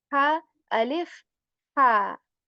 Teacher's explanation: This is again a letter of throat, and this ha comes from the middle portion of throat, which is like more airy, right? Constricting the muscles of your throat to articulate this ha.